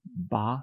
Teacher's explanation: we have the voiced sound, which is the B lip sound. That's represented by the ba sound.